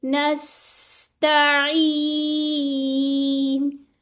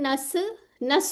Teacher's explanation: सीन को हिलाना नहीं है, इसमें आवाज चलानी है, ठीक है, थोड़ी देर।